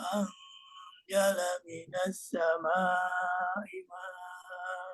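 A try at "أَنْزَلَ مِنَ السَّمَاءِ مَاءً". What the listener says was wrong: Panjang lagi Pak. Pak, ini namanya wajib itu kita kalau kita jaiznya kita kasih 3, berarti wajibnya lebih. Jadi 4 aja dikasih di situ supaya nggak habis napas.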